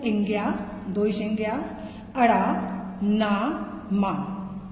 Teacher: इंग्या, दो संज्ञा, अड़ा, ना, मा वर्णों को अनुनासिक कहते हैं। इनके उच्चारण में नाक से भी ध्वनि निकलती है।